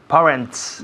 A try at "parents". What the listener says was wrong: no parents, sino parents. Un sonido vocal muy largo. Parents.